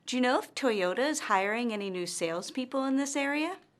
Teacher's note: notice that her intonation rises at the end of this yes or no question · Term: rising intonation